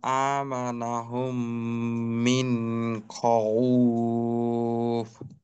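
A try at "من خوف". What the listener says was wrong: আচ্ছা, মিন, এখানে নুন, মিন খৌফ, আর একটা হলো খ ওয়াও ফা, এই তিনটাকে এক ধাক্কায় উচ্চারণ করতে হবে। এখানে যেন খ, উফ, খ, উফ, খ এবং উফ দুইটা যেন আলাদা ধাক্কায় না হয় বা দুইবারে না হয়, একবারে হৌ, হৌ, এভাবে। বাকি মিন, এইটা একটু সময় নিল বাড়তি। এইটা মনে করেন যে তেলাওয়াতের উম, যে সময়ের বন্টন, ওইটাকে একটু গড়বড় করে আর কি।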